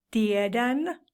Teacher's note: The verb to know is tietää in Finnish, and it has the consonant T, which changes into D in the weak form